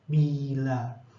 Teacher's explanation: Nah, ini yang tinggi, yang I tinggi berada di atas, depan, tak bulat dan tertutup